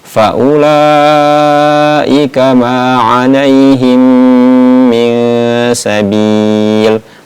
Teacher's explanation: Mim sukun ataupun mim mati bertemu dengan mim, maka digunahkan, didengungkan cara membacanya. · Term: idgham mimi